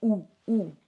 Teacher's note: it's much deeper it's in the throat you should feel your voice box moving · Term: ouu sound